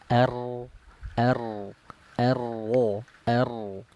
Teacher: Huruf ro coba. Makhrajnya dari ujung lidah naik ke langit-langit ya.